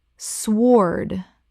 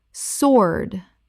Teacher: The W is completely silent.